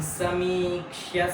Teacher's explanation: त्याचा उच्चारण क्ष्य म्हणजे क्ष पण आला पाहिजे, सोबत य सुद्धा आला पाहिजे. क्ष्य असा करायचा आहे.